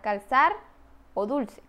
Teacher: Alófono lateral linguointerdental. Se articula con el ápice de la lengua entre los incisivos. Se produce cuando L está en posición silábica postnuclear, como por ejemplo en las palabras calzar o dulce. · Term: lateral lengua interdental